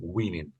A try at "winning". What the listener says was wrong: A little bit sort of winning. sort of the NG sound was missing a bit on the end. So is it like winning rather than winning?